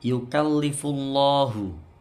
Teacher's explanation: Lafal Allah ini tafkhim atau tebal karena sebelumnya dhammah.